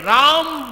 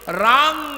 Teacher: लोग बस ' n' ध्वनि का उच्चारण करते हैं। इस शब्द में 'n' का उच्चारण नहीं होना चाहिए , इसे बोलना नहीं चाहिए, लेकिन लोग बोलते हैं।